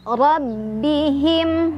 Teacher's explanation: ro-nya sendiri dia dibaca secara tafkhim karena ro-nya barisnya di atas atau fathah. Jadi ditebalkan.